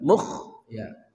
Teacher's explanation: kha dari ujung kerongkongan